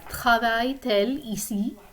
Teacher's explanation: Okay, if I try to invert it, it's going to be travaille elle ici, and it sounds kind of like the same sounds melding together in the middle, so I have to put the T to break it up